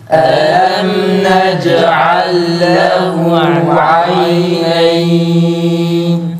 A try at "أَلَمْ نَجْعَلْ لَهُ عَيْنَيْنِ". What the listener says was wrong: Tekrar zamiri uzatalım. Zamiri biraz daha dengeli bir şekilde uzatalım.